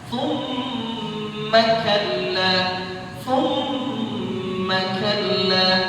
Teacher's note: ingat mim bertasydid dibaca ghunnah. 2 harakat.